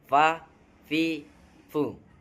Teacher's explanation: Yang pertama, bibir bagian bawah dengan ujung gigi atas. Bibir bagian bawah dengan ujung gigi atas merupakan tempat keluarnya huruf fa.